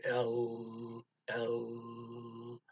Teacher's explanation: you'll hear it vibrating cause your vocal chords are active